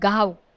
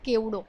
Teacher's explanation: એમાં વ ભલે લખાતો પણ એનું ઉચ્ચારણ સ્વરકોટીનું છે, ઉ આવે છે.